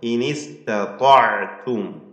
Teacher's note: സാക്കിന മീം വരുന്നു അന്ത്യത്തിൽ, ഇൽഹാർ ഷഫവിയാണ്, മണിക്കരുത്. · ത്വാഇന് മാത്രമാണ് തഫ്ഹീം ഉള്ളത്. അതുകൊണ്ട് വ്യക്തമായി ശ്രദ്ധിച്ചുകൊണ്ട് അക്ഷരങ്ങൾക്കൊന്നും മാറ്റം സംഭവിക്കാതെ പാരായണം ചെയ്യണം.